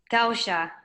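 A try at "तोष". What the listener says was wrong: To, it is to, not tau. Tosha.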